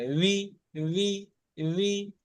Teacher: নিচের ঠোঁটটায়, নিচের যে ঠোঁট আছে না, এই ঠোঁটেতে উপরের দাঁতের উপরে যে বড় বড় দাঁতটা আছে, এই বড় বড় দাঁতটা ওই নিচের ঠোঁটে গিয়ে লেগে উচ্চারণ হয়